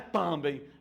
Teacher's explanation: a sílaba mais forte é bem